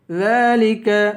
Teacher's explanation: ذال کو ایک الف کے برابر کھینچ کر پڑھیں گے